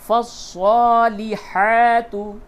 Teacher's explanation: لام کے نیچے زیر، اور ہا کے اوپر کھڑا زبر، تو صاد اور ہا کو تھوڑا سا کھینچیں گے اور لام کو جلدی پڑھیں گے